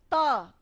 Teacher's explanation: त हम बोलते हैं तो हमारी जीभ हमारे दांतों तक आती है, और अब दांतों पे बिना लगे त बोलिए, दिक्कत हो रही है ना।